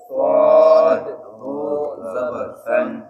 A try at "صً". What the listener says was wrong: صن. آپ موٹا کریں گے، صاد حروف مستعلیہ میں سے ہے. صن.